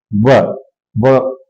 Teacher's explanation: स्थान व व का उच्चारण स्थान क्या है दं तोष और व यानी व दांत को ओठ में टच कराया जा रहा व दंत का ओठ में टचिंग होना व व ये है